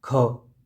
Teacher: जब आप खुद बोल रहे हैं, जैसे क बोल रहे हैं, क खत्म हो गया, ख ज़्यादा श्वास बाहर आती है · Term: महाप्राण